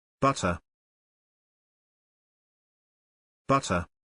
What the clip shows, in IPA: ˈbʌt.ər